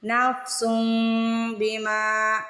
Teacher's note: سن پہ غنہ کرنا ہے اور میم کی آواز، میم کا تلفظ ادا کرنا ہے